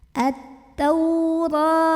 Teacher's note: Ra dibunyikan secara tafkhim karena ra-nya berbaris di atas fathah